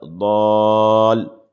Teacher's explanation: کا قاعدہ ہو رہا کہ ضاد کے بعد میں الف ہے، الف کے بعد والے حرف پر تشدید ہے تو یہ مد لازم کا قاعدہ ہوگا، یہاں پر 5 الف کے برابر اس کو کھینچیں گے